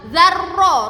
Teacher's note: Za pakai zal nggih, lidahnya jangan sampai keluar. Zarro, ronya bertasydid.